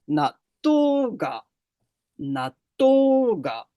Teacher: le petit tsu, il n'a pas de son. Donc, il va y avoir un doublement de consonnes. Et ce doublement de consonnes, donc, il va s'effectuer en haut.